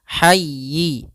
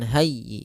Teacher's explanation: ha lembut, jangan hayyi, jangan dibaca ha besar